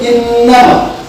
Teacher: Huruf gunah yang bertasdid itu ada dua, nun bertasdid atau mim bertasdid. Dibacanya didengungkan, diukur, ditahan seukuran 2 harakat. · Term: gunah asliyah